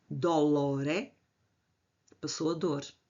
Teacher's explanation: Crase. Duas vogais em iato contraem-se numa só.